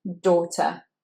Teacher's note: It's or, long or, very rounded mouth shape, or, daughter. The end, that ER is said with schwa